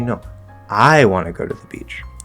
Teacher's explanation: I'm making I really strong so it stands out. I. Okay, notice we don't really reduce anymore because it's I. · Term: attentional intonation